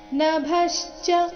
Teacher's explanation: ಮುಂದೆ ವ್ಯ ಸಂಯುಕ್ತಾಕ್ಷರ ಬಂದ ಕಾರಣ ನಭಶ್ಚ ಇಲ್ಲಿ ಭ ಮಹಾಪ್ರಾಣ ರಸ್ವ ಅದರ ಮೇಲೆ ಆಘಾತ ಬರಬೇಕು.